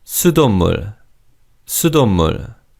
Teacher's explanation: in fast speech, the 시옷 받침 in the second syllable is almost silent